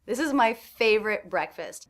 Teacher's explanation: What was stressed in that sentence? I heard fave and breck. Also, these 3 words, this is my, those were incredibly fast.